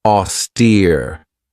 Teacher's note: This has two syllables and the stress is on that second syllable with that long e sound.